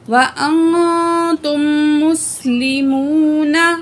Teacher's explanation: تا کی پیش کو آگے جو تا ہے، تا کی پیش کو ہم نے میم سے ملا کے پڑھنا، ٹھیک ہے. میم مشدد ہے، غنہ کر کے پڑھیں گے